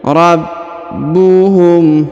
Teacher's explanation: Huruf ba berharakat tasdid maka ditahan dan ditekan